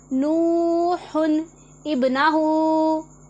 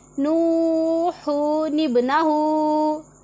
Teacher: फिर हम तनवीन की नून जज़म वाली को बदलकर नून ज़ेर वाली बनाकर पढ़ेंगे तो फिर वहाँ पर क्या होगा कि तनवीन की एक हरकत ख़त्म हो जाएगी और एक ही बाकी रहेगी। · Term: नून कुतनी